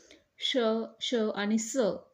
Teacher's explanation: तर उत्तर आहे उष्मे म्हणजे घर्षक. श, श आणि स हे आपण जेव्हा उच्चार करतो तेव्हा तोंडातून हवा घर्षण होते आणि हवा बाहेर पडते, ते आहेत घर्षक.